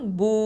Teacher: வாவ் சுக்குன் பூ, 2 ஹரக்கத்தை நீட்டுவோம், வாவுல் மத்து